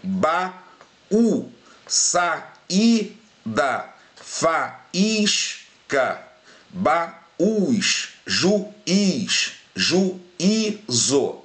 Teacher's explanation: quando eu pronuncio a palavra, o I ou U, tá, é a letra com a pronúncia mais forte na palavra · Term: I ou U tônico